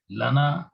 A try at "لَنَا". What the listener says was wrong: لانا تھوڑا سا لمبا, جب الف لگا ہوتا ہے تھوڑا سا لانا.